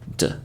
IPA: d